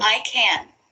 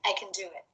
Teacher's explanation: he's pronouncing the first one as a strong form and the second one as a weak form